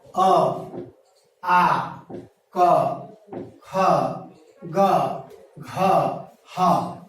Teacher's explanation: सभी जानते हैं कि शरीर का यह मुख्य भाग है कंठ, यहां से कंठ का उच्चारण होता है। अर्थात अ, आ, क, ख, ग, घ, ह और ये कंठ से उच्चारित होते हैं